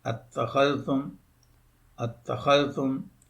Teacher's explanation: تو یہ زیر جو ہے یہ حمزہ وصلی جو ہے یہ اس کے تیسرے رفع کی وجہ سے اس پر آ رہی ہے، اتخذتم۔ اب اس حمزہ وصلی کو جب درمیان میں آ رہا ہے تو اس کو گرا دیں گے، جب اس کو گرائیں گے تو اس کی شکل یہ بن جائے گی اتخذتم، اتخذتم۔ · دوسرا حمزہ جو زیر والا وصلی ہے اس کو حذف کر دیں گے، اس کو گرا دیں گے